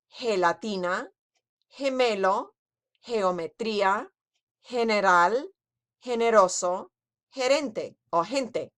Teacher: If the G is followed by an E or an I, then we have a soft G sound, but instead of being J, it's H. Note this is different from the soft G sound in English, which is J.